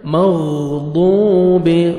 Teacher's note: ضاد کو موٹا کر کے پڑھنا ہے ، 1 سیکنڈ کھینچیں گے، واو مد ہے، واو جزم سے